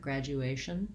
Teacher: it has our sh sound our vowel schwa and our n sound and we almost make no vowel there graduation we want to go right from the sh to the · we want to go right from the SH to the N as much as possible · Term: shun ending